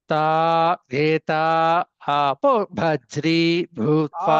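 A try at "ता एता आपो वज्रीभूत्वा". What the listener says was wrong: ఆపో ఆపో దీర్ఘం అండి.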